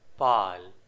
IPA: paːl